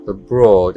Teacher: Esta es la O larga, abroad. Es como una O pero alargando el sonido.